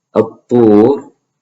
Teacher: But in any case, an-nahar, the ra is heavy. At-tur, the ra is heavy. It's preceded by a waw.